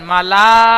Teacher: লামটি তিন আলিফ টান দেবেন